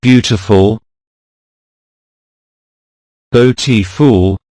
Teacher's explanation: there are 3 syllables in the word beautiful, beautiful, and the word stress falls on the first one, beau.